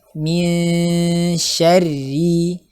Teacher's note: dari mim kasrahnya pastikan tipis